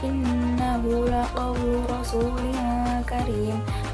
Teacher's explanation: Pada bacaan innahu terdapat hukum tajwid gunnah musyaddadah karena nunnya bertasydid. Cara bacanya didengungkan.